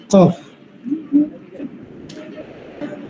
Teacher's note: জিহ্বার গোড়া হইতে একটু আগে বাড়িয়ে তার বরাবর উপরে তালুর সঙ্গে লাগিয়ে কাফ, চিকন আওয়াজে